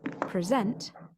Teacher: noun in some cases the position of the stressed syllable changes present as a verb meaning to give a talk has the stress on the second syllable